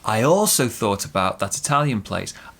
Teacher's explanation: big stress on also